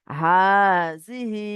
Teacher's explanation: খারা জেরটি হলো ইয়া মাদ্দার সমতুল্য, সুতরাং খারা জেরকে একালি পরিমাণ টান দিয়ে পড়তে হবে।